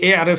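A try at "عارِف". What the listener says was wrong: जो है ना ए आरिफ या इसकी सुना दें। ए आरफ नहीं है ए आरिफ। ए आरिफ रा के नीचे जेर पढ़नी है।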